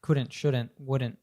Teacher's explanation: we cut the T off at the end